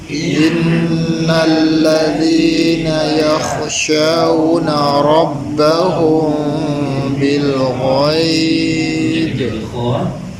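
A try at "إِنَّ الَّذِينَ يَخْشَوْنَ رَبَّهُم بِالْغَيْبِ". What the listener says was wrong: Kha jangan bunyi H, jangan bunyi K. Pada sini cenderung dia bunyi H. Jangan bunyi dia kha.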